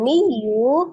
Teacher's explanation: Kemudian miyu kasro tanwin ketemu dengan huruf ya, idgham bi gunnah. Diidgham, ditasdid, dileburkan ke huruf ya disertai dengan dengung.